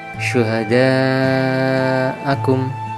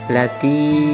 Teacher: dibaca panjang 3 ketukan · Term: maddah